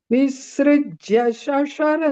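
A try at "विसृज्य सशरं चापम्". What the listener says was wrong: visrijya. Don't stress the is. No, visrijya. Visrijya.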